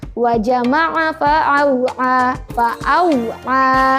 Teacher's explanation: untuk huruf A-nya betul-betul posisi asal suaranya dari tenggorokan di bagian tengah.